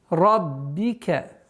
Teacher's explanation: Удваиваем ба, применяем кесра. Ра здесь у нас твердый звук.